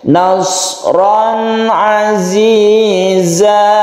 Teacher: suara dari nun mati itu tidak terlalu ditekan ya, karena dia mempunyai sifat tawassut atau tengah-tengah.